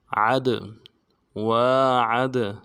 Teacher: دال جب ساکن ہو تو قلقلہ کریں گے، قلقلہ میں سے ہوگا عد، وعد۔